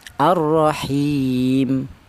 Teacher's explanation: dibaca qasar itu artinya pendek yaitu satu alif atau dua harakat